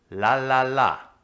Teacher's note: The tip of the tongue touches the alveolar ridge behind the teeth.